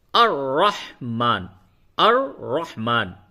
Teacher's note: تو ال کو رحمان سے جب ملائیں گے تو الرحمن، الرحمن، یہ لام نہیں پڑھیں گے